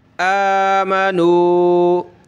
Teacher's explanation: حمزہ کھڑا زبر آ، ایک الف کی لمٹ میں کھینچیں گے